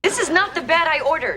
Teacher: Obviamente el verbo tiene que estar en pasado, pero vas a escuchar que no pronuncia el ed.